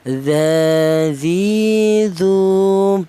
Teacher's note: berasal dari ujung lidah menyentuh ujung Ujung gigi seri bagian atas